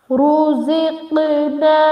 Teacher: ra and qaf are the bulky letters, and qaf we also do qalqala at qaf